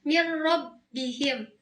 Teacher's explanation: Yang kedua ada idgham bila gunah. Idgham bila gunah ini tanpa dengung. Hurufnya lam dan ro.